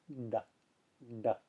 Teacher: show you my mouth when I do that d d so it's a lot like T except that there's a little more voice to it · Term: retroflex